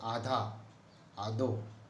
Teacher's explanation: महाप्राण का अल्प प्राण कर देना की प्रवृत्ति इस ढूंढाड़ी बोली में है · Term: अल्प प्राणीकरण